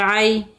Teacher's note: یا لین ہے، نرمی اور جلدی کے ساتھ پڑھیں گے